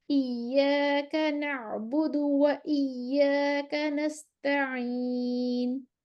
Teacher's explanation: آئین وسطی حلق سے نکل رہی ہے لیکن اس کی کھلی ہوئی آواز ہے باہر کی طرف نکل رہی ہے